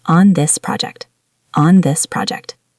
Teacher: Be careful with the th sound in this. Make sure your tongue touches your teeth.